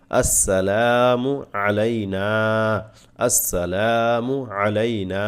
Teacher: লামে টানা এক আলিফ